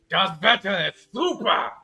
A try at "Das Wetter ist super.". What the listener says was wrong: Stop screaming. Ah, it hurts me. You can also be gentle in German.